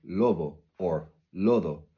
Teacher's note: Now you'll often notice this in words like lobo or lodo, where the D and the B become way softer and can actually become hard to distinguish from each other. Now this happens usually when the B, D, or G is in the middle of a word and surrounded by two vowels. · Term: slide approximants